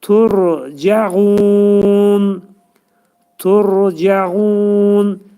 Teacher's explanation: Ra hərfinin məxrəci dilin ucu üst dişin altındakı ətə dəyir. · Cəğunda qayn hərfi boğazın ortasından çıxarılır və qayn hərfindən qabaq cə hərfini demişlər.